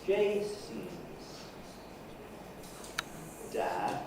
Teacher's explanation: Second syllable, which consists of the syllabic N, is on a low pitch. Jason's dad, and then dad is rising.